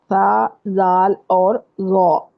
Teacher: یہ تینوں حروف زبان کی نوک کو اوپر کے سامنے والے 2 دانتوں کے اندر والے کنارے سے لگا کر ادا کرتے ہیں. اس میں بھی فرق صرف اتنا ہے کہ سا اور زال باریک ہے اور ضا جو ہے زوئیں والا ضا وہ موٹی آواز کے ساتھ پڑھا جائے گا. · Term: نرمی سے ادا ہونے والے حروف